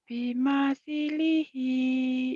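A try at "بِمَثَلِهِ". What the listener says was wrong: bimasalihi bukan bimisi, bimasa.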